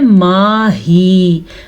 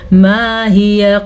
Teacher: वक्फ़ की वजह से आखिरी हर्फ को साकिन कर देंगे, इसीलिए हम इसको पढ़ रहे हैं माही।